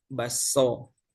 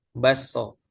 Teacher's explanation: K-nya diidghamkan ke huruf S. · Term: asimilasi